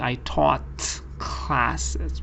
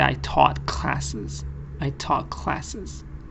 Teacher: Get rid of the t sound and change it to the k sound. It's gonna make it easier to pronounce because joining happens there.